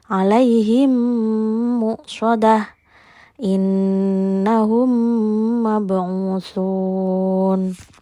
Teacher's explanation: Idgam mimi terjadi apabila mim sukun bertemu dengan huruf mim. Cara membacanya dengan memasukkan suara mim ke huruf mim ke depannya. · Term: idgham mimmi